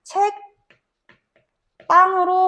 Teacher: 뒤에 오는 안 울림 예사소리가 된소리로 발음이 되는 거지.